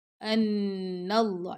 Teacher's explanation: نون پہ ہم غنہ کر رہے ہیں، پہلے غنہ کریں گے پھر اس نون کو اللہ کی لام سے ملائیں گے